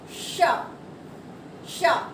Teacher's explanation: इसमें हमारी जिह्वा मूर्धन्य को टच करती है। तालू और दांतों के बीच वाला पार्ट होता है, उसे मूर्धन्य कहते हैं। हमारी जीभ वहां पर जाकर टच करेगी। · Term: मूर्धन्य श